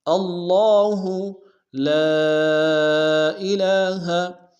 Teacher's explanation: لام الف مدہ کے ساتھ مد منفصل بھی ہے، مد منفصل کو کم سے کم 2 الف دار میں کھینچیں گے۔